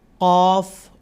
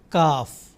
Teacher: कफ थोड़ा अंदर अंदर के हिस्से से आता है और काफ थोड़े से उसके हट के बाहर के हिस्से से · قاف تھوڑا اندر کے حصے سے آتا ہے، اور کاف تھوڑے سے اس کے ہٹ کے باہر کے حصے سے